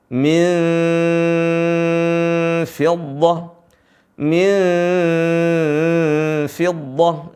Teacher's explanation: seringki membacanya dengan mim jadi dibaca dengan mim Fid bukan mim bukan bibir ketemu bibir tapi gigi seri bertemu dengan bibir bawah